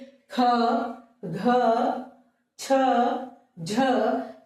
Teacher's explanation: क्योंकि जब हम इनका उच्चारण करते हैं तो देखिए ह की ध्वनि भी सुनाई देगी। बोलिए ख छ झ। · ह का स्वर भी आ रहा है ना, ह की ध्वनि भी सुनाई देगी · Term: महाप्राण, हकार ध्वनियां